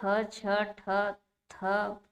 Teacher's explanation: तो ये ख, छ, ठ, थ, फ जो है ये महाप्राण हैं। इन्हें बोलने में ज्यादा हवा निकलती है मुंह से।